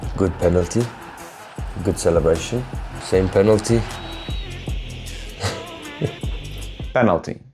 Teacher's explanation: Native speakers crush them all into the same lazy sound, uh, penalty. Norwegian doesn't crush anything, every vowel gets its full value as written